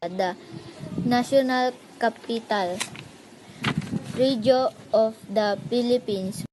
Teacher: Region was mispronounced as regio.